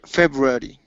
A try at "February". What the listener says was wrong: Okay, you're saying February. Okay, take off that D sound at the end. February. Okay, you're saying Eddie. Instead of Eddie, it's airy. February.